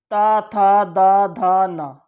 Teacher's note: ता बोलोगे तब भी आपकी जबान जो है दांतों पे लगेगी, था बोलोगे जब भी दांतों पे लगेगी, दा बोलोगे जब भी दांतों पे लगेगी, धा बोलोगे जब भी आपकी जबान दांतों पे लगेगी, ना बोलोगे जब भी आपकी जबान दांतों पे लगेगी। · अब आता ता वर्ग, इसे बोलते हैं दंत, यानी दांतों का स्पर्श।